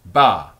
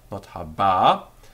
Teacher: And the answer, ba, has not got a vowel in front of it. It begins the syllable with no vowel in front of it, so it's ba.